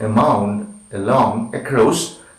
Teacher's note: below, half open, it is unrounded and short